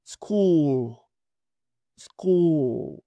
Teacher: hay que pronunciarlo redondeando los labios, sacando un poco los labios hacia afuera, como cuando se va a dar un beso